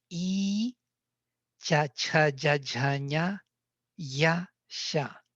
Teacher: They are all articulated on the same level of palatals.